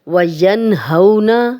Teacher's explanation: ین نون ساکن، آگے ہا آ گیا، ہم غنہ نہیں کر رہے کیونکہ ہا ہے۔ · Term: اظہار حلقی